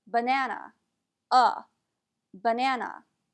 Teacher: in that word both the first a and the last a are pronounced as a schwa